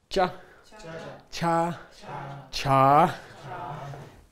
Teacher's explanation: the palatal row, which is being made by contact with the tongue with the top of the mouth.